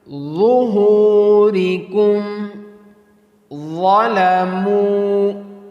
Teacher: So next letters is dha and dhad. So pronounce the dha with heavy, bold, and hard voice.